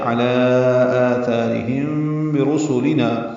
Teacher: آثارہم آ مد بدل ہے، ثا مد اصلی الف مد ہے، 2 حرکات لمبا کریں گے، را باریک پڑھیں گے۔ ہم میں میم ساکن کے بعد با آنے کی وجہ سے اخفاء شفوی ہے